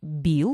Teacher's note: Когда произносишь бил, голос включается практически мгновенно.